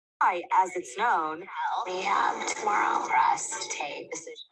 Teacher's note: upspeak, ending sentences with a question mark